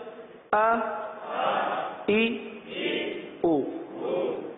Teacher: حرکات کو بغیر کھینچے بغیر جھٹکا دیے معروف پڑھتے ہیں، تو آپ نے دیکھا کہ حمزہ میں ہم نے نہ ہی کھینچا ہے اور جھٹکے سے بھی بچنے کی کوشش کی ہے.